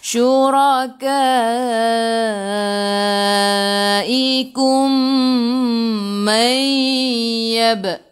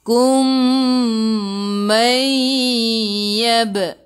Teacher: Kum mim bertemu dengan mim. Idgham mislain masuk ke dalam mim yang kedua dan dengung 2 harakat.